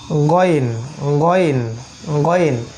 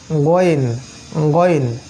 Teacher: গলার উপরের পার্ট থেকে গয়েন